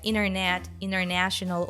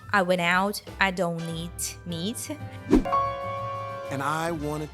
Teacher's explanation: the stress falls on the syllable before n then we can drop the T sound